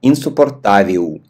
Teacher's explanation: Л на конце произносим у.